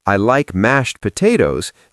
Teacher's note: But in a sentence, I like mashed potatoes. The D disappears.